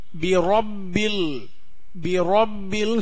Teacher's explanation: ராக்கு மேல ஜபர் போட்டிருக்கு. இந்த ராவை வாய் நிறைய உச்சரிக்கணும்.